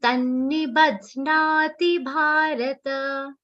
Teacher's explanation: Ta is followed by double na. Ba is followed by half the ha and a complete na.